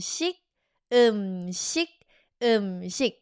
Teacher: Don't pronounce the K all the way. Just block the throat. Chic. Like when you go knock knock, you don't go knock knock. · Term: soft K